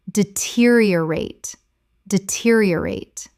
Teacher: Five syllables with the stress on the second.